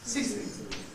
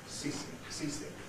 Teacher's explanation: Like in teacher, the E is doubly clipped.